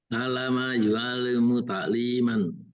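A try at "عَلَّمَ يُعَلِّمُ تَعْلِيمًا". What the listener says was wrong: Ditekan Pak, ininya tasdidnya. Alama Ta'liman. Li-nya panjang.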